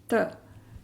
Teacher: हमारी जुबान दांतों के मसूड़ों को दो ऊपर के दांतों के मसूड़ों की तरफ लगती है जड़ में